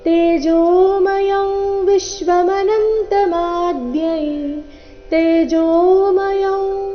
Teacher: ಇಲ್ಲಿ ಅನುಸ್ವಾರದ ಉಚ್ಚಾರಣೆ ನಾಸಿಕಾ ವ ರೀತಿ, ಕಾರಣ ಮುಂದಿನ ಶಬ್ದ ಅವರ್ಗೀಯ ವ್ಯಂಜನ ವ, ವಿಶ್ವ ವದೊಂದಿಗೆನೆ ಪ್ರಾರಂಭ ಆಗ್ತಾ ಇದೆ.